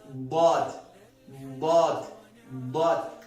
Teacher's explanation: د پورته د ځامې غاښونه سره اضراس ورته ویل کېږي له هغو سره به د بغل طرف د بغل د ژبې ورسره وجنګوي او ضاد به ادا کړي